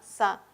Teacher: Alveolar. Si es fricativo alveolar